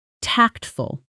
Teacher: stress on the first syllable, short and clean